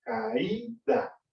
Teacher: Caída, aunque es una vocal fuerte, la A, y una vocal débil, la I, no hay diptongo porque la vocal débil está acentuada. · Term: hiato acentual